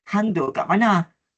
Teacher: Lenggok bagi ayat ini menujuk menunjukkan bahawa lenggoknya agak sedikit mendatar dan menurun di akhir perkataan · Manakala langgam bagi contoh ini sebutannya agak pantas dan tekanan iaitu pada perkataan hang pada awal perkataan serta nada yang bersahaja